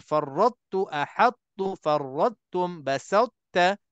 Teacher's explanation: Jadi kesimpulannya, empat perkataan ini dalam Al-Quran, farrattu, ahattu, farrattum, basatta, semuanya datang huruf tebal dulu bertemu dengan huruf tipis. Jadi huruf tebal ta pula. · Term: idgham mutajanisain naqis